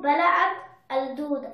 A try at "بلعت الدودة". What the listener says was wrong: جميل، you read very nice.